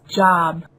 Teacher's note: 입이 앞으로 튀어나가면서 성대가 울리는 거거든요.